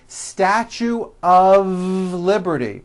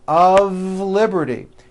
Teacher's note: notice how I connected the word of with the word Liberty